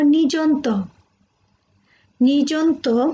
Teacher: আমরা লিখার ক্ষেত্রে হয়তো দুটি রূপ পাই, মূর্ধন্য, দন্তান্ন, কিন্তু উচ্চারণের ক্ষেত্রে কি হয়, আমরা দুটোই দন্তান্ন বলি